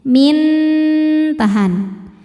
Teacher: Karena ada nun sukun bertemu nun berharakat. Maka nun pertama dimasukkan ke nun kedua disertai dengung. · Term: idghamunah, idgham bi gunnah